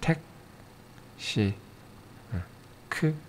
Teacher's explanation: 크, 혀뿌리가 성대를 살짝 막는 것 같죠?